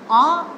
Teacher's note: लेकिन आ का उच्चारण जिस प्रकार हम करते हैं तो इसकी आकृति एक विव्रत के रूप में होती है, पूरा मुख खुला हुआ होता है, जिसके कारण से विव्रत स्वर भी कहा जाता है।